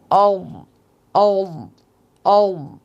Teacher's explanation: জিহ্বার গোড়ার কিনারা উপরের মাড়ির দাঁতের গোড়ার সাথে লাগিয়ে উচ্চারিত হয় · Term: ওয়াদ